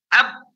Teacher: Tapi nanti dia punya sifat khusus memantulnya suara qalqalah tadi. Aslinya huruf ba itu ketika dia sukun aslinya ab, berhenti, tidak ada suara lagi.